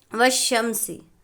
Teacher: الف اور لام کو نہ پڑھیں گے بلکہ بعد والے حروف سے ملا کر پڑھیں گے۔ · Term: حروف شمسی